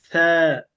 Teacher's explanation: থা উচ্চারণ করতে হবে একেবারে আমার জিহ্বার আগা, উপরে দাঁতের আগা আছে এই আগার সঙ্গে লেগে থা। পাতলা থা। তা।